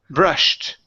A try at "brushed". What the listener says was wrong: No, you're pronouncing this E. You're saying brushed. Okay, instead of brushed, it's brushed. Brushed. So you only want to pronounce a T. So it's brushed.